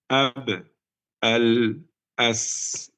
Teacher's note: Ba tertahan suara, lam mengalir sedikit, sa lebih mengalir, sin lebih mengalir.